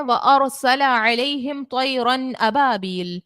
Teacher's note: رو کو ہم نے پر پڑھنا ہے، کیوں؟ کیونکہ رو ساکن سے پہلے زبر ہے ، اسی لیے یہاں پر رو کو موٹا پڑا، اور اس